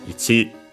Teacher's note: the accent of ichi is actually on the last mora. So yeah, on the chi itself.